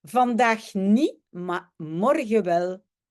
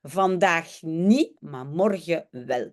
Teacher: On a laissé tomber le T de niet, le AR de maar et le N de morgen. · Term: tussentaal